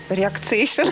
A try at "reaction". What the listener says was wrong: Смотрите, реакция, извиняюсь, на конце «ция». Не «ация», а «ция». То есть мы ставим «реак», «реак», «Реакшн».